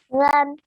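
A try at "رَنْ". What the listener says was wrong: it's not run it's not r u n run it's wrong it's heavy ron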